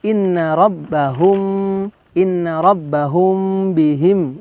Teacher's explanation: hukum tajwidnya adalah ikhfa syafawi. Maka dia harus ada penekanan lebih lama ya, ditahan lebih lama dibandingkan idhar syafawi